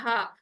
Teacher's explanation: गोल हा बन जाता है, जो कि हमारा नीचे सीने की तरफ से अदा होता है, अक्सर हल्क से अदा होता है